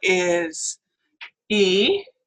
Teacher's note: it is a high front vowel